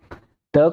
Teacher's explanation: जब दंत यानी कि जब हमारी जीवा दांतों से टकराती है, कहाँ से टकराएगी, दांतों में टकराएगी, दांतों से टकराती है तो उनका उच्चारण जो कहा जाता है वो क्या होता है, दंत होता है। त का उच्चारण करते हैं, हमारी जीवा कहाँ पे टकराती है, दंत में टकराती है।